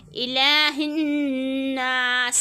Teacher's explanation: سین میں سیٹی کی آواز · یہ آیت نمبر 3 کے بارے میں بتا رہی ہوں کہ نون مشدد اور میم مشدد میں ہمیشہ غنہ ہوتا ہے، تو ہم یہاں پر غنہ کریں گے۔ ساتھ میں الف سے پہلے زبر تو الف مدہ، تو یہاں پہ ہم 2 انگلی کی مقدار کھینچیں گے